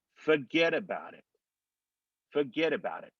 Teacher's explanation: But when you go to forget about it, and you're running those together, that T drops and disappears.